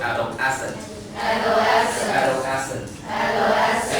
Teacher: the stress is on the middle